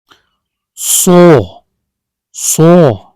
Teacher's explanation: This Arabic letter is articulated by placing the tip or blade of the tongue close to the upper gum ridge, alveolar area, creating a narrow passage for air to flow with friction. It is a voiceless emphatic fricative, meaning the vocal cords do not vibrate during pronunciation, while the back of the tongue rises slightly toward the soft palate to produce a heavy, deep quality known as tafkheem. · a sound called the alveolar fricative, which has a darker and heavier pronunciation than the regular sound.